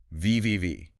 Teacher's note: >> It's a great example of how the next sound changes the current sound. >> The V in have is voiced. You feel your throat vibrate,